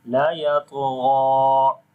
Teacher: On the ta and ghain we read in heavy sound, and on the ta we also make qalqala, which is weak qalqala, as the qalqala letter is coming with sukoon sign in the middle of the word. So we say la yatgha, and here we are longing ghain due to standing fatha on it.